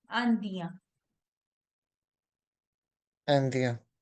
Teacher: the word is ending with en, which is a nasal sound.